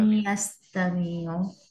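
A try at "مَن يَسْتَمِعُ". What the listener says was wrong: এখানেও মিম পড়ে গেছে ওই কারণেই। কিন্তু এটা নুন সাকিন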